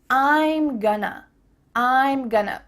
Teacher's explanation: we're reducing going to to become gonna.